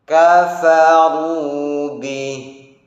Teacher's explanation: Perhatikan hamsnya kaf, hamsnya fa, tebalnya ra harus dirasakan betul.